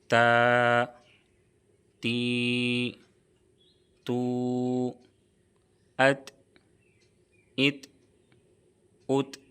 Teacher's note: ता का मखरज है जुबान की नोक और सनाए औलिया की जड़ ऊपर के सामने वाले दो दांत को सनाए औलिया कहते हैं। · تا کا مخرج ہے زبان کی نوک اور ثنایا علیہ کی جڑ۔ اوپر کے سامنے والے دو دانت کو ثنایا علیہ کہتے ہیں۔ · تا میں قلقلہ تو نہیں ہوگا، لیکن اس میں جنبش ہوگی،